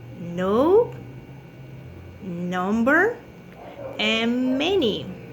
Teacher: We have contact with the upper alveolar ridge and the tongue, So, the manner of articulation is nasal.